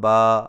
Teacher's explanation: کھڑا زبر کو ہونٹوں کو اوپر کی طرف کھول کر تھوڑا سا کھینچ کر پڑھا جاتا ہے